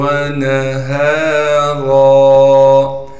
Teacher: را پر 2 زبر ہونے کی وجہ سے را کو موٹا کر کے پڑھیں گے، اور را پر جب وقف کریں گے پھر را کو ایک الف کے مقدار کھینچیں گے